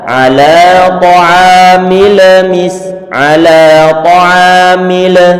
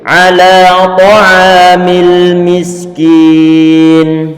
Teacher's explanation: huruf lam dia bukan termasuk huruf Qalqalah sehingga jangan dipantulkan